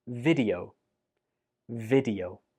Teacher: It's much better to use the short E sound on the first syllable like this.